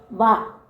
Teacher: ചുണ്ട് മാത്രമല്ല, വ എന്ന് പറയുമ്പോൾ പല്ലും വരും. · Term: ദന്തോഷ്ടം